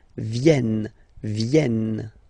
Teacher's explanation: this classic ending ENT for the third person of the plural is here, but phonetically it doesn't exist, so you don't pronounce it